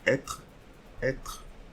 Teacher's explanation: We are not going to read this E, but instead we are going to read TR, so être, être.